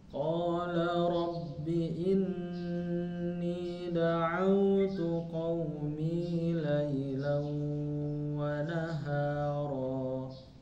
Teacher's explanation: ada tanwin fathah bertemu dengan waw, jadi idgham bi gunnah